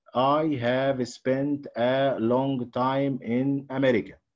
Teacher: He's doing what's called syllable time. Syllable time. Okay, and he gives each syllable the same time.